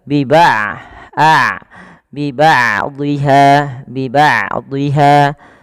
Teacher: Maka di sini huruf ain tidak terlalu dialirkan dan tidak terlalu ditahan suaranya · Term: bainiah